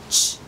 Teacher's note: This sound is made, the ch sound is a voiceless sound. It's made with our lips forward and we call that the chocolate sound.